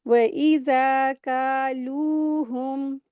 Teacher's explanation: ज़ाल के साथ अलिफ मद्दा है, 2 हरकत इसको खींच के पढ़ेंगे।